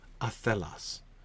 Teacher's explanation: Unstressed, stressed, right? With the stress in the middle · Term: iambic shape